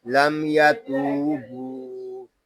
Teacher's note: یہاں میم ساکن میں اظہار شفوی ہوگا کیونکہ میم ساکن کے بعد حرف با اور میم کے علاوہ یا آ رہا ہے